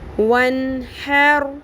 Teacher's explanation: کیونکہ آگے ہے حروف ہلکی میں سے ح، تو نون کی آواز کو ہم نے، نون ساکن کی آواز کو ظاہر کر کے پڑھنا ہے